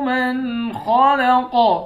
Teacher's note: قاف پر جب وقف کریں گے تو قاف کو ساکن کر کے قاف پر قلقلہ کریں گے